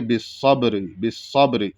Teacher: قلقلہ واضح ہونا چاہیے، یعنی با کی آواز پلٹ کر کے آنی چاہیے ، تو اس کو جب پڑھیں گے بالصبر، بالصبر، اس طریقے